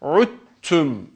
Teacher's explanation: Yani önce gelen dal harfi kendisinden sonra gelen harekeli olan ta harfine idğam edilerek okunur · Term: idğamı mütecaniseyn